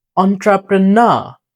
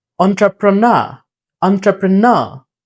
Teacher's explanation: এবং শেষের আরটা হচ্ছে উচ্চারণ হবে না। ব্রিটিশ অ্যাকসেন্টে যদি শেষে আর থাকে তাহলে সেটা উচ্চারণ হয় না